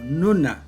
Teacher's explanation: La R se convierte en N, nasal alveolar. Por ejemplo, runa es pronunciada esta palabra como nuna y muy común en el Callejón de Huaylas.